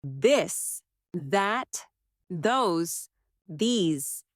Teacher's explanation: let your tongue touch your teeth lightly but use your voice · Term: softer version